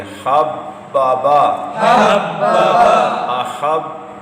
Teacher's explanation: حروف قلقلہ مشدد ہو تو جماؤ سے ادا کریں گے